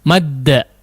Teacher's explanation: Seperti misalnya madda, madda tidak dibaca mada ya, tapi madda, dihentakkan, ditasydidkan, dikeraskan ya. Madda ada hentakan di situ